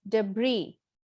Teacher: english where they clearly lay stress on the first syllable and the second syllable is stressed in the american english